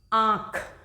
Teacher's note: जबकि अनुस्वार का उच्चारण सिर्फ नाक से होता है, लेकिन अनुनासिक का उच्चारण नाक और मुंह से होता है